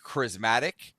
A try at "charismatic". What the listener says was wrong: You put the emphasis on the wrong syllable.